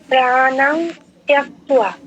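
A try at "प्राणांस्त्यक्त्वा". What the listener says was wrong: দন্তস্বটা miss হয়ে যাচ্ছে, ত্যক্ত্বা, ত্যক্ত্বা, প্রাণাং ত্যক্ত্বা। আরেকবার বলুন।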